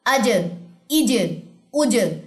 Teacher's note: جیم جزم جو ہے وہ جیسے کہ میں نے پہلے بتایا کہ اس پہ آپ کلکلا کریں گے، اسٹرانگ طریقے سے ہٹ ہوگا